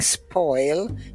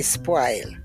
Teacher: we do not use the rounded vowels in Jamaica they're all broad a vowels